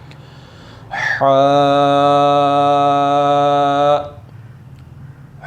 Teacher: حا حلق کے درمیانی حصہ سے ادا ہوتا ہے۔ اچھا، حا کو ادا کرتے وقت آپ نے خاص خیال رکھنا ہے کہ آپ حا کی ہی آواز نکالیں، اس میں ہا کی آواز بالکل بھی نہ آئے۔